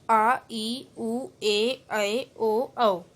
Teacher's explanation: दीर्घ स्वर, इन स्वरों के उच्चारण में ह्रस्व स्वरों से दुगना समय लगता है